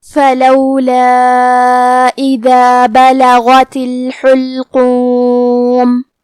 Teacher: ہا کو ہم حلق کے درمیان والے حصے سے پڑھیں گے اور اسے پیش سے پڑھیں گے